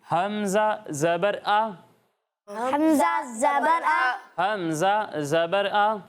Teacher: جب آپ نے اس پر زبر لگایا ہے تو آپ کو معلوم ہے کہ جس حرف پر کوئی حرکت ہو، خواہ زبر ہو، زیر ہو، پیش ہو، تو اسے ہم بغیر کھینچے، بغیر جھٹکا دیے پڑھتے ہیں، اس میں ہم جھٹکا نہیں دیتے اور اسے کھینچتے بھی نہیں ہیں